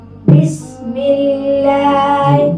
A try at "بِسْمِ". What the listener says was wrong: بسم میم کے نیچے زیر جو ہے یہ باریک نہیں ہوگی. بسم اللہ مل میں اور می اس کی آواز میں فرق محسوس ہو رہا ہے بیٹا آپ کو؟ جی میں کی آواز نہ ہو می. بسم اللہ.